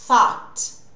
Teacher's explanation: falando então do TH sem voz, que é esse soprado